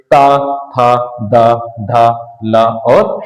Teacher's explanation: दांत और जीभ के स्पर्श से बोले जाने वाले वर्ण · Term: दंत व्यंजन